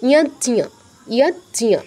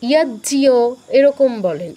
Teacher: এখানে ইয় ফলা আনবেন না, অনেকে ইয়াজ্জিও এরকম বলেন, ইয়াজ্জিও নয়, ইয়াজ্জিও যদি বলি তাহলে জ যুগ ইয় ফলা হলো, মানে জ ফলা হলো, কিন্তু উচ্চারণটা কি ইয়াজ্জিয়া, নাসিকার প্রয়োগ হবে আর ঞ পূর্ণ উচ্চারণ হবে, জ অর্ধ উচ্চারণ হবে